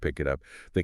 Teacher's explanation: The k links to the i. The t links to the u.